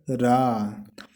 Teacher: जिस व्यंजन के उच्चारण के समय जीभ की नोक वायु से रगड़ खाकर कांपती है उसे लुंठित या प्रकंपित व्यंजन कहते हैं, जैसे रा। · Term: लुंठित व्यंजन